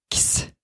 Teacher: X would be pronounced X, like K and S together.